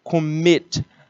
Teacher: A sílaba tônica é a última.